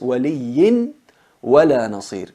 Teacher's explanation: Fusionamos el ya, fusionamos el tanwin en la waw y se convierte en una waw reduplicada con gunna